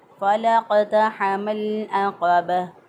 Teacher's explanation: हा को वस्ते हलक से अदा किया